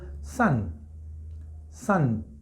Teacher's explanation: tenemos otra A que es muy similar al español y nuestros labios permanecen neutral